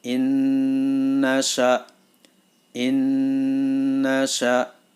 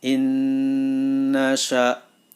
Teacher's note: Dalam kalimat innasya ada huruf idgham bi gunnah yaitu nun sukun bertemu dengan nun. Maka suara nun yang pertama masuk ke dalam huruf nun yang kedua